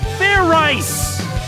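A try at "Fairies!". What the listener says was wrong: Like I said, it's not fair rice, it's fair eyes. Do it again, and this time make sure you pronounce the Z.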